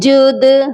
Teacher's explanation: جیم دال پیش جد، اور دال کو دیکھ لیجئے حروف قلقلہ ہے، اور حروف قلقلہ جب ساکن ہو جاتے ہیں تو ان پر قلقلہ لازمی کیا جاتا ہے۔ یہاں پر دال ساکن ہے، اسی لیے ہم دال پر قلقلہ کریں گے۔